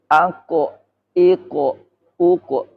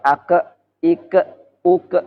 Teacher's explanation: Jadi huruf kof keluar dari pangkalnya lidah.